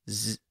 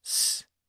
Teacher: almost the exact same sound mechanically the only difference is that the vocal cords are activated when we pronounce the z sound Z but they're silent when we pronounce the S sound s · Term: voiced